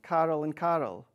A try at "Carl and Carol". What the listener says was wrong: Carl and Carol. Yeah, but yours sound exactly the same. Carol and Carol. That's what I'm hearing. I know you're saying two different things, but that's what Carl.